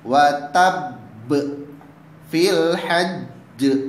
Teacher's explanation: Sedangkan yang ketiga adalah qalqalah akbar, yakni huruf qalqalah yang berada di akhir ayat dan dia berharakat tasydid atau anaknya itu sabdu. Maka cara membacanya dengan cara ditekan lalu dipantulkan. Contohnya watab fil hajj.